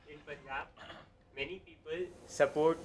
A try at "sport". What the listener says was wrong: Yeah, they don't pronounce sport as sport. They pronounce it as support.